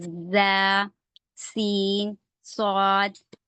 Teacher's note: सौफीर का मतलब होता है सीटी जैसी आवाज